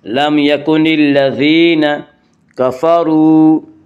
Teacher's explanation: وا مدہ وہ واو جو ساکن ہو اس سے پہلے پیش ہو، وا مدہ کو ایک الف کے برابر کھینچ کر پڑھیں گے